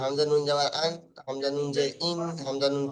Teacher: একটি ধারালো দাঁত থেকে নিয়ে অন্য ধারালো দাঁতের গড়ার সাথে লাগিয়ে উচ্চারিত হয় নুন